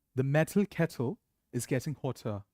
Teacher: we are cancelling the r sound in the end